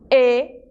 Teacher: É muito importante vocês perceberem que o E em espanhol não é aberto